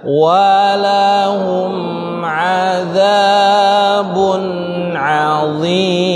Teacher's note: di sini ada mim ketemu ain. Didengung atau tidak, Pak? Tidak. Karena tidak bertemu ba atau mim.